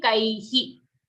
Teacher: So this is, although till now all the examples we did, the visarga is rhyming with the vowel coming before it. If the I vowel is coming before a visarga, the visarga will be he here. Okay, it won't be kai hai, it will be kai hi.